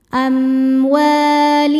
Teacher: Sebab ada alif sebelumnya baris fathah. Cara bacanya panjang dua harakat. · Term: mad thobi'i zohiri